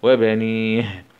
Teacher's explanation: نقف عليه بالسكون العارض مع همس الهاء